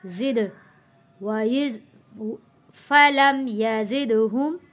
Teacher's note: دال حروف قلقلہ ہے، یہاں پہ آواز پلٹ کر آئے گی